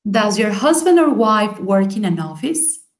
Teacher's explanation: Husband, wife, and work and office están acentuadas.